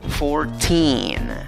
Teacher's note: en la segunda sílaba, que es la sílaba con la mayor fuerza de voz, también necesitas solo una I larga. ¿Ok? Recuerda, esa E con el sombrerito arriba se pronuncia I larga.